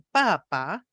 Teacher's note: la caída del tono de la altura tonal se produce en la primera sílaba